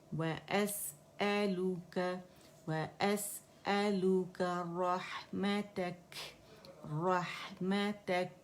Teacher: जब इसे साकिन किया तो कैफ का हमने हमस वाज़े करना है